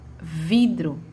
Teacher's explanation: a sílaba de maior tonicidade na palavra vidro é a vi